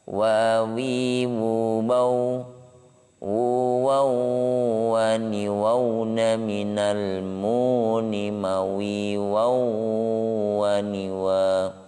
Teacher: Ada terasa tanwin atau nun sukun bertemu dengan wawu, maka di situ juga termasuk bagian dari hukum nun sukun, yaitu idgham bi gunnah, di mana huruf-huruf idgham bi gunnah termasuk mim, ya, nun, mim dan waw. Maka ketika tanwin atau nun sukun bertemu dengan waw, itu ada jeda, artinya ada ditahan, ya, ada dengungan yang harus ditahan 3 harokat. · Waw merupakan bagian dari huruf as-safatain yang keluar ketika bibir kita terbuka. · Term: huruf waw